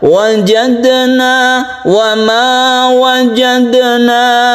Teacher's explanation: Qalqalah Sugra kita pantulkan wajahna pantulannya se- bagaimana biasa saja yaitu qolqolah sugroh dia tidak memantul terlalu keras jadi biasa saja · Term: qalqalah sughra